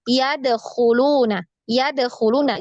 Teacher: dia tertahan nafasnya tertahan suaranya ini berarti dia memantul jadinya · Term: sifat memantul